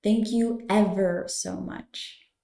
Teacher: remember to pronounce the V sound in ever you should feel almost a little buzz on your lip when you sound out ever